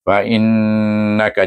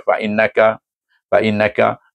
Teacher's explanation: Kemudian baru pergi fa innaka fa alif fa hamzah ya nun nun bertasdik wajib didengungkan wajibul ghunnah dengan dengung dua harakat